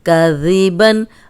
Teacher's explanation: اب ذال جو ہے اس میں سیٹی کی آواز نہیں آنی چاہیے